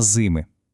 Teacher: наголос падає на и